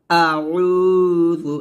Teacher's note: জাল জিহ্বার আগা সামনের উপরের দুই দাঁতের আগার সঙ্গে লাগিয়ে জালটা পাতলা করে উচ্চারণ করবেন।